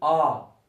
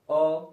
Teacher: दीर्घ में 2 गुना समय लगेगा, ह्रस्व में 1 गुना लगेगा